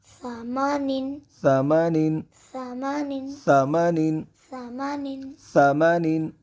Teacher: اب یہاں پہ ہم نے سا کی آواز کو بغیر سیٹی کے ادا کرنا ہے. بغیر سیٹی کے ادا کرنا ہے.